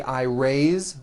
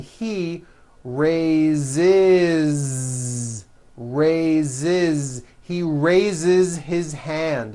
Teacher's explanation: So we say I raise with a voiced Z ending, and he raises.